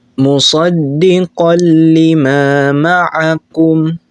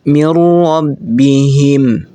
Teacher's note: Hukumnya itu dimasukkan dan tidak berdengung. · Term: idgham bila gunnah